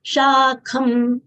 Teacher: Kha full letter, Mahapran letter. We should exhale while saying kha. It should not come out as ka. It is Shakham, half ma, Shakham and not Shakhama.